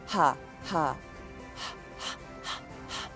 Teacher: So, ha, if you can make the sound ha, it's a consonant, but it's an open-mouthed, voiceless consonant. Because your vocal cords here don't vibrate when you make the H sound